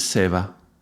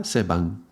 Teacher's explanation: depending on which regions, we'll pronounce some words with a V and the same word will be pronounced with a B in other regions